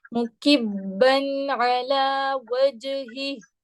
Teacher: مکب کاف کو ڈائریکٹ آپ با کے ساتھ ملائیں گے